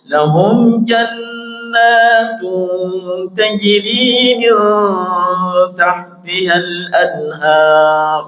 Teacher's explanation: Jannah itu gunnah musyaddadah, tunnya itu ikhfa' hakiki, ada dengungnya.